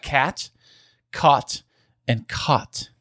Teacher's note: So, you do not have the low back vowel merger unless you were doing some performative separation there.